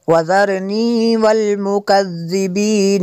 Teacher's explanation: یہاں پہ نون مشدد ہے، یہاں پہ غنہ کریں گے